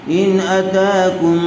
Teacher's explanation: نون ساکن کے بعد حروف حلقی میں سے حمزہ آیا ہوا ہے اس لیے بغیر غننے کے جلد اظہار کر کے پڑھیں گے